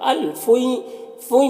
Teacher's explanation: الفوئی، فوئی میں بھی ادغام ناقص ہو رہا ہے، غین حروف مستعلیہ میں سے ہے۔ فو میں جو مد ہے یہ مد منفصل ہے، اسے 3 سے 4 الف کے برابر کھینچ کر پڑھتے ہیں، اور ایک الف کے برابر بھی کھینچ کر پڑھ سکتے ہیں۔